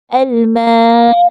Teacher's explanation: nous allons allonger la lettre alif. Donc, le alif sert à prolonger le mime. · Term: l'allongement